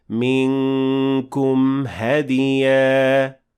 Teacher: And at the end of it this time, we have إظهار, since the meme at the end of منكم will have to be shown, since after it directly we have the letter ha. So we say منكم هدية.